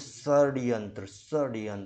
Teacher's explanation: दांत के ऊपर वाला जो आपका मसूड़े वाला हिस्सा है इस पे आपके जीभ की टकराहट हो रही है